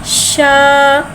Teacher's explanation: शीन को एक अलिफ यानी 3 हरकत के बराबर खींच के पढ़ेंगे। शीन में शीन में तफशी वाली सीटी को ज़ाहिर करके पढ़ेंगे। शीन के ऊपर ज़बर है, ज़बर को मुँह खोल के अदा करके पढ़ेंगे।